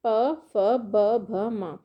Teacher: जब हम प फ ब भ म बोल रहे हैं तो हमारे ओष्ठ आपस में जुड़ रहे हैं